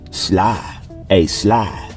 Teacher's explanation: you wouldn't hear the D and the e at the end of the word